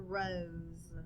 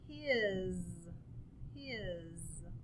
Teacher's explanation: s's sound like a z so that's our rule for today it's called voiced s and it means that the s has a z sound